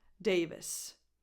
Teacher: Vis. You just go from the V to the voiceless S at the end.